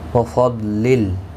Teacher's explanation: ضاد حروف مستعلیہ ہے، پر پڑھا جائے گا